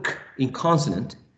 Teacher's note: k is voiceless in terms of voicing, right? Because there's no vibration of the vocal cords. Is velar because the back part of the tongue is raised against the velum or soft palate.